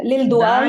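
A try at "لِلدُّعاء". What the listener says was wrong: दाल नहीं, लाम के बाद जो हरफ हरफ आ रहा है ना, वो शमसी आ रहा है ना। लिद दुआई, लिल दुआई पढ़ेंगी तो गलत हो जाएगा। लिद दुआई,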